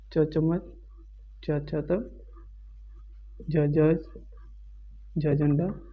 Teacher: तालू या तालव्य से बोले जाने वाले